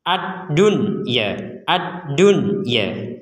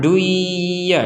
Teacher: Nun sukunnya tertulis maka kita tidak memasukkan Nun ini kepada huruf ya